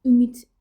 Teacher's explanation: Ümid sözündə sonu t ilə bitir. Tələffüz eləyəndə ümid şəklində olur.